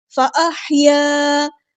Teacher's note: ہا کو غصہ حلق کے میڈل تھروٹ سے ادا کرنا ہے